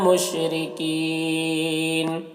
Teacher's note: مشرکین، رو کو باریک پڑھیں گے اور یہاں پر وقف کریں گے تو مد عارض وقفی ہوگا، تو اس طرح سے پڑھیں گے۔